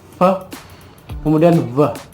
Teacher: Jadi udara bergerak melewati gigi atas dan lower lip, or it also called labiodental. Jadi ada penyempitan yang dilakukan oleh gigi bagian atas dan bibir bagian bawah.